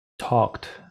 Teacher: en el caso de talk, no tiene vibración, ¿cierto? Por lo tanto, voy a tener que agregar una T. Por lo tanto, en el pasado de talk sería talked.